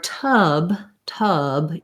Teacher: for tub tub you're going to hold that schwa longer because there's a voice sound at the end